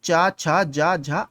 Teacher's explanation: ये सभी तालव्य व्यंजन कहलाते हैं और तालु के स्पर्श से बोले जाते हैं।